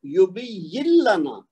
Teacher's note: اسی طرح نیچے اگر دیکھیں آپ تو یہ کیا ہے یبین اور لنا، تو اس میں بھی نون ساکن کے بعد لام ہے، تو ہم کیا کریں گے یبین لنا، یعنی جو یا ہے یہ والا اس کو لام کے ساتھ ڈائریکٹ ملانا ہے، نون کی آواز بیچ میں سے گر جائے گی۔ یبین لنا، اس کو یبین لنا نہیں کرنا، یعنی زبردستی نہیں کرنی۔